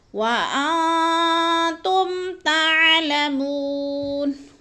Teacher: وَأَنتُمْ، وَأَن میں اخفا ہے، تم غنہ نہیں کرنا کیونکہ میم ساکن کے بعد تا آ گیا تو ادھر اظہار شفوی، غنہ نہیں کرنا۔ وَأَنتُمْ تَعْلَمُونَ، منہ کو تھوڑا سا کھینچنا ہے، وہ مد ہے۔